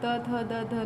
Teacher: दंत स्थान से उच्चारित वर्ण दंती कहलाते हैं। इन वर्णों का उच्चारण करने में जिह्वा दांतों का स्पर्श करती है।